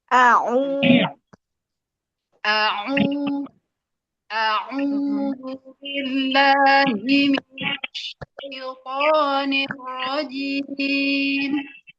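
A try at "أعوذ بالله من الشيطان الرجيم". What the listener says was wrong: Turunkan nirrojim. Kuatkan kasrohnya. Jim, kurang kuat. Kalau kata orang napak tuh kurang napak. I. Coba I. Turunkan ke bawah. I. Nirrojim.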